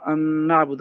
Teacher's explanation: جی اب اس میں نا اپنا یہ دو ایک ہی حرف ہیں، مثل کہتے ہیں اس کے، جیسے الذهب کے اندر دونوں حرف زال ہیں، آگے ہے متجانسین آئے گا، یہ ہے مثلین، اس میں ادغام تام ہے کہ پہلا حرف دوسرے کے اندر بالکل ہی مدغم ہو گیا، تو گویا کہ ایک حرف بن گیا۔ ان نعبدا، اب پہلا ان کے اندر نون ساکن تھا، دوسرے میں اس کو ادغام کر دیا تو ان نعبد، گویا کہ ایک حرف بن گیا یہ۔